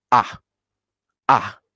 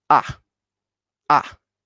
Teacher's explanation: Tone 4 is it's from the highest volume to the lowest. So we start from the very high volume and it's immediately goes down. And the tone 4 is very sharp sound.